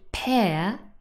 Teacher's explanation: This is the diphthong air, not ear.